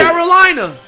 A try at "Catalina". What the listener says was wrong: Catalina. Catalina. C-A-T. Not Carolina. Well, that was the Italian that came out on you when you said that. Carolina. Carolina.